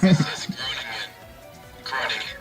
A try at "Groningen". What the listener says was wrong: No, you don't, Groningen. You don't really pronounce the G.